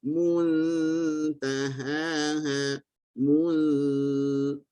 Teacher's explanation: Hanya mu saja yang muncung, nun jangan muncung, dia sakin, tenang, mulut jangan buat apa-apa.